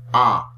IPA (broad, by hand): æ